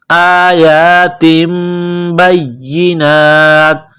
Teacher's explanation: إِلَيْكَ آیات بینات، یہ کڑا زبر ہے، 1 الف کے لمٹ میں کھینچنا ہے. آیات، تنوین کے بعد با ہے تو یہاں آواز ناک میں چھپائیں گے، غنہ کریں گے. اس ناک میں آواز چھپانے کو اقلاب کہتے ہیں.